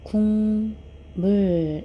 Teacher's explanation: 요렇게 국이라는 음절이 있을 때요 음절 하나만으로는 음문의 변동이 일어나지 않는데 뒤에 미음이 왔을 때 미음의 영향을 받아서 앞에 있는 기억이 이응으로 변합니다